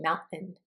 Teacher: Sometimes a T will sound like a glottal stop. It'll just be like in mountain.